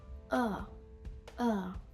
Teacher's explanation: А це максимально чіткий звук а. Щоб зробити його більш нейтральним, я мушу не напружувати свою артикуляцію. Виходить такий ніби як лінивий звук.